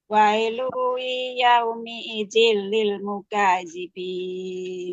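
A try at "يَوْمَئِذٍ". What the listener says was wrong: Nah, ini yauma ya. Wailu yauma, Ibu ya. Yauma idin, tidak yaumi.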